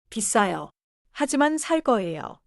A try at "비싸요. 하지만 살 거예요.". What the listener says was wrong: 하지만 start it like a new sentence. Don't glue it to 비싸요.